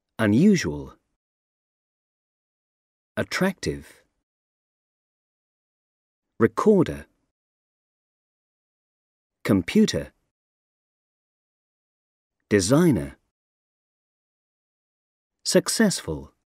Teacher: The stress on the second syllable.